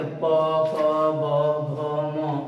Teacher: प वर्ग देखा जाए यानी प को उच्चारण करके देखते हैं तो प प ब भ म, यानी उच्चारण करते हैं तो जो हमारे जो दोनों ओठ हैं आपस में क्या कर रहे हैं चिपक रहे हैं सट रहे हैं, तो यानी प वर्ग का उच्चारण करते हैं तो हमारे ओठ चिपक रहे हैं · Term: ओष्ठ वर्ण